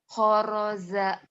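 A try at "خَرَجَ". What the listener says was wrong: Khoroja. Jakarta, ingat-ingat Jakarta, Jatinegara, Jawa, Jawa Barat, Jawa Timur, jangan zama, jangan ya. Khoroja keras.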